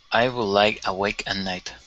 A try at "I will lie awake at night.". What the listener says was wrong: So here, yes, we can combine those here, but we can't add a K sound like I would like away. I would lie. I would lie awake at night.